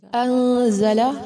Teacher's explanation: نون ساکن کے بعد زا ہے، اخفا کیا جائے گا